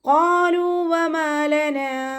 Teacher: ഖാഫ് ഇസ്തിഅലാൻ്റെ letter ആയതുകൊണ്ട് നാവിൻ്റെ ബേക്ക് മുകളിലേക്ക് പൊക്കിയിട്ട് തർഫീം ചെയ്യുക